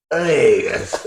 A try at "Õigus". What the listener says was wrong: No, open mouth. Õigus. No, it was actually very close.